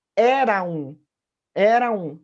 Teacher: a gente vai juntar na sonoridade essas duas vogais, que vai refletir, portanto, na sílaba poética, passando a ser apenas uma